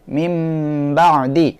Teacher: হবে মিম নুন জের মিন নুন সাকিন এর পরের অক্ষর বা নুন সাকিনের পরের অক্ষর যদি বা আসে তাহলে নুনকে মিম দ্বারা পরিবর্তন করিয়া পড়তে হবে